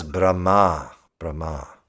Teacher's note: when the H and the M are together even if the H is in the front you do a little little H after the M